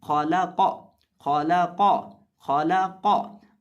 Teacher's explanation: इस लफ्ज़ के अंदर हमारे पास 2 हरूफ मोटे हैं। खौ भी मोटा है और कौफ भी। खौ पहला हरफ है और कौफ तीसरा हरफ है, और दरमियान में जो लाम है इसको हमने बरीक करके पढ़ना है।